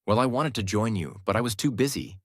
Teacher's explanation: The voice rises in the middle, falls at the end. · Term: Mixed intonation